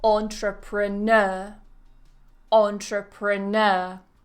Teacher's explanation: that primary stress the main stress always falls on that n